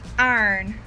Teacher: Unlike the New York City accent, in the South, they really pronounce the R's.